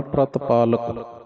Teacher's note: ਪਿਰਤ ਨਹੀਂ ਕਹਿਣਾ ਪ੍ਰਤ ਅੱਧਾ ਰਾਰਾ ਪੜਨਾ